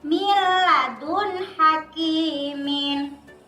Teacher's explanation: dibaca masuk tanpa mendengung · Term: idgham bilagunnah